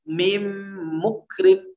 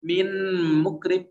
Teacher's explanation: Berbeda dengan idgham kamil, yaitu bertemu dengan huruf mim. Mim mukrim, huruf nunnya sempurna hilang. Tidak ada lagi min mukrim, tidak ada, tapi langsung mim mukrim begitu ya.